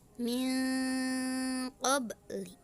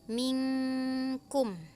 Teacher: Ikfa ab'ad ini menjadikan suara nun sukun atau tanwin hilang atau tidak terdengar sama sekali, dan biasanya terdengar menjadi ang. Huruf dari ikfa ab'ad ini adalah hurufnya qaf dan kaf.